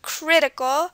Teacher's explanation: the stress is on the crit at the beginning